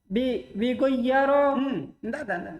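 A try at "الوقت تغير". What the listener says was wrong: al-waktu lihat baik-baik huruf pertamanya.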